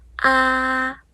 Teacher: 虽然它是一声，但是它的音是最高的